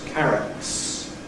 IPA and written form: ˈkærəts (carrots)